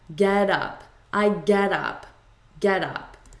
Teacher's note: in American English, when we have a T between two vowels, we turn it into a D.